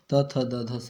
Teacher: ऊपर वाले दांतों को आपका जीभ जब टच करता तो उसको हम लोग दंत व्यंजन कहते हैं